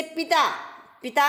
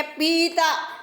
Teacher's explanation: पिता में कम समय लग रहा है, और एक है पीता, पानी पीता हूँ मैं, तो उसमें बड़ी की मात्रा आ जाएगी।